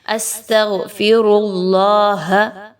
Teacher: اللہ کا حرف بھی پر پڑھا جائے گا اور را بھی